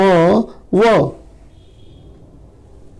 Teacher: यह दंतोष्ठ है। इसका उच्चारण दांत और ओष्ठ दोनों की सहायता से होता है।